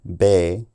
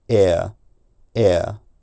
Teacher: you'll hear how the E Glides to a more Central tongue position at the end · held for longer to comp compensate for the missing consonant or a vowel with a slightly centralized offglide